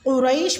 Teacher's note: ایلافی میں بھی لام کھڑی زبر لا کے ساتھ ہے تو لام کو باریک ہی پڑھیں گے۔ قریش میں قاف کا مخرج آپ نے پر یعنی کہ موٹا ادا کرنا ہے، اور ریش میں آپ نے تھوڑا سا اس کو لانگ لے کے جانا ہے، ریش یعنی کہ یہاں پہ یائے لین ہوگا۔